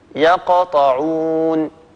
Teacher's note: وسط الكلمة مثل قوله تعالى يقطعون، لاحظوا القاف من كلمة يقطعون، فلما ننطق هذه القاف المقلقلة مباشرة الفم يتهيأ على مخرج الطاء التي هي بعد حرف القاف، بالتالي تكون القلقلة أقل وضوحا، يقطعون. هذا مثال لحرف القلقلة وسط الكلمة. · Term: القلقلة الصغرى